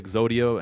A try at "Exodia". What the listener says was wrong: So you just said Exodio.